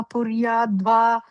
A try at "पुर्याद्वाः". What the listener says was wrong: The first line like dvaha. Okay, we added a visarga there.